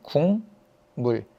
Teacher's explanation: 기억이 이응으로 바뀌었네 왜 바뀌었냐 여기 있는 미음 때문에 바뀐 거예요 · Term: 비음화